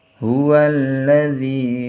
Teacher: zinya dibaca panjang karena ada harokat kasroh bertemu dengan ya sukun